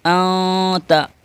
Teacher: نون ساکن کے بعد حروف اخفاء میں سے تا آ رہا ہے، تو یہاں پر انتا نہیں بولیں گے، نون کی آواز کو ناک میں چھپائیں گے